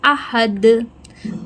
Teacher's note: حلق سے نکلنے والا ہا ہے